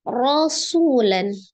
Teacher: Ro dibaca tebal, ro fathah, kemudian sunya adalah mad. Waw sukun sebelumnya dhammah.